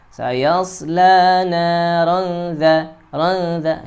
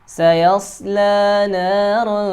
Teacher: Ya, tanwin bertemu dengan huruf dzal, ikhfa haqiqi. Cara bacanya, huruf tanwinnya ini suara an disamarkan kepada huruf dzal. Disertai dengan adanya gunnah, gunnah ya.